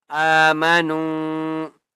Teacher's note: نون کو ایک الف کی مقدار کھینچ کر پڑھیں گے.